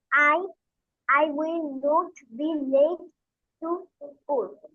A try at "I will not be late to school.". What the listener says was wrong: নোট হবে না, নট। হুম, অ, ট, নট। I will নট be late to school. I will নট be late to school.